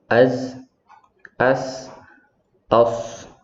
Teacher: Yang pertama sofir, artinya mengeluarkan suara seperti burung. Itu terdapat pada huruf zai, sin, dan shad. Contoh ketika sukun az, as, aus.